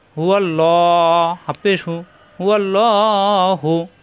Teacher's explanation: এখানে লা না পড়ে ল পড়লাম, কারণ কি আল্লাহ শব্দের ডান পাশে জবর অথবা পেশ আসলে আল্লাহ শব্দ মোটা হয়। আরবিতে একে পুর বলা হয়।